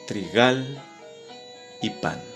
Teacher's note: Trigal y pan son palabras agudas. La última sílaba es la que tiene el acento tónico.